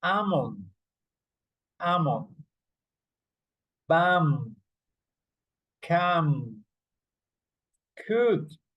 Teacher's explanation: In these words, you don't pronounce the L.